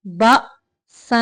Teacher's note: यहाँ पे हमजा है झटके से